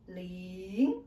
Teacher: Our second tone is going up. Just now I introduced you 0, start lower and then go up.